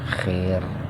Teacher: ro-nya dibaca tipis karena sebelum ro-nya kasroh. Berbeda kalau sebelum ro-nya itu fathah atau domah, tuh ro-nya harus dibaca tebal kayak akbar.